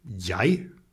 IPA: jấj